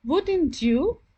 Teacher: my tone my voice went slightly up wouldn't you this is called rising intonation